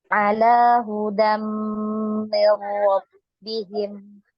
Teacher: di sini tanwin ketemu mim, yaitu didengung juga ya, ditahan.